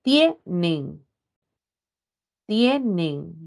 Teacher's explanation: tiene la sílaba tónica en tie, es palabra grave.